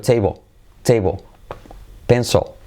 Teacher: Ni siquiera toca la punta de la lengua. O sea, cuando va al final de la palabra la L, digamos que es casi como si se evaporara. Está un poquito allí, ¿vale?